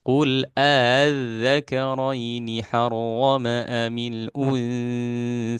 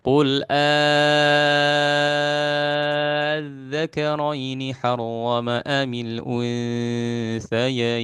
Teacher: boleh dengan tasil atau dengan mad lazim kilmi musaqqal 6 harokat